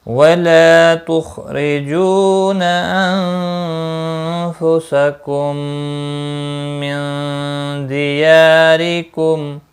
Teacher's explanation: میم ساکن کے بعد دوسرا میم آیا ہے، ادغام شفوی ہوگا، نون ساکن کے بعد دال آیا ہے، اخفاء حقیقی ہوگا، یا مدہ ہے، ایک الف کے برابر کھینچ کر پڑھیں گے، را زیر کی وجہ سے باریک ہوگا، اور میم وقف کی صورت میں میم ساکن پڑھا جائے گا، اور ملانے کی صورت میں اظہار شفوی ہوگا۔